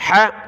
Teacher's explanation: حا کو گلے سے نکالا